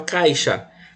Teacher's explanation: Porque só pode existir uma vogal em cada sílaba. O I de vogal ele ficou semivogal. Por quê? Porque o som ele vai ser mais fraquinho do que o A. E a letra A sempre vai ser vogal.